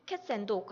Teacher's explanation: 그 중에 그러니까 그 중에 보시면은 2번째 법칙을 보면은 덜 강조되는 단어는 약하게 표현한다 이런 룰이 있는데, 예를 들어서 cat and dog 같은 경우에는 빨리 하면은 cats and dog 하면은 and가 이제 덜 강조가 되잖아요. 그러니까 이런 간습적인 습관적으로 이렇게 말하다 보면은 덜 강조되는 그런 입모양은 거의 표현되지가 않는다라고 합니다.